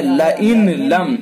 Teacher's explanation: ادغام کریں گے تو نون کو لام سے بدل دیں گے فوراً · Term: ادغام تام